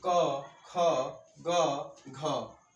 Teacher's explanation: ये ऐसे 4 अक्षर हैं, 4 वर्ण हैं जिनका उच्चारण स्थान क्या है? कंठ है।